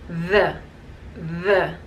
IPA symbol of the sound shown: ð